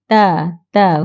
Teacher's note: di hujung gusi belakang gigi kacip atas